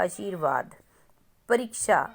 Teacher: जहां हम टाइम लगा के ई की मात्रा को बोलते हैं वो होता है हमारा बड़ी ई ठीक है तो आशीर्वाद में श प बड़ी की साउंड है